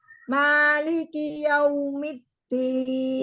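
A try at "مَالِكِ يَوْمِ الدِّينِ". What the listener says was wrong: Ya, ma, itu terlalu lebar dan tidak boleh diangkat. Ma, ya, nadanya diturunin. Maliki yaumiddin. Mengaji itu tidak boleh berbeban. Jadi tidak boleh berbeban. Jadi kayak kita bicara. Maliki yaumiddin.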